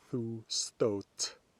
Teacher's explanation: It's not about the G, it's about the eth. Eth plus T always assimilates to TT, so thu stótt.